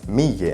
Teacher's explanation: in the dialect, an original Hamze in the vicinity of a Kasra vowel just turns into Ya.